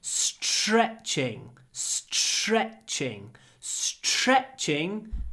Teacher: when we have t-r, it's pronounced like a ch. So we get str, s-ch-r.